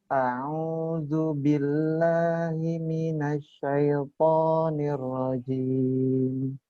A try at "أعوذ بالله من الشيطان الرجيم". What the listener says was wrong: Nah, sekarang fokus huruf H-nya, Ustaz. Hanya khofa itu namanya. Ngilang H-nya. A'udzu billahi, bukan hi.